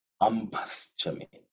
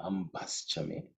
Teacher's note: So now, in terms of pronunciation, ambha. That bha is the fourth letter in the pavarga, so it has to be aspirated.